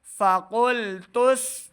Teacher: تا کو سین کے سامنے لائیں گے تو سیٹی کی آواز آئے گی